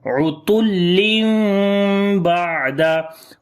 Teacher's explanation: Utullim, ain we read from the middle of the throat. After tanween again there is ba, we make iqlab and ikhfa shafawi as well. We will hide the sound of meme and we read softly here, the meme sound.